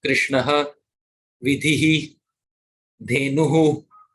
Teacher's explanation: So aha, that H. So that makes the sound aha, ihi, uhu, based on what swara is before it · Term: Visarga